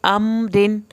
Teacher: الف زبر میم ام، را دو زیر رن، ام میم کو ہلانا نہیں ہے، رن را کے نیچے زیر آ جائے یا دو زیر آ جائے، را پتلا پڑا جاتا ہے، اسی طرح ہم اس کو پتلا پڑھیں گے